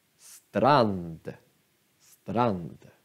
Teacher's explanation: Men strand har bara ett N. Men det är ett långt N.